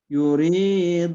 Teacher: Yuridullahu tafkim ya. Allah sebelum Allah itu bertanda fathah atau dhamma, maka Allahnya kita baca tebal atau tafkim